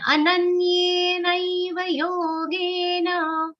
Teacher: Ananyena has a stress of na, and ye and nai both are long sounds.